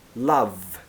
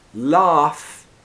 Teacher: love is very short, like in up. Love. So you've got the vowel sound and the voiced consonant v.